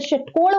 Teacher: जो ये श से षटकोण वाला श होता है इसका उच्चारण स्थान मूर्धन्य होता है